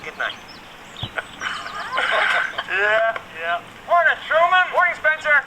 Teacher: the r in morning is clearly pronounced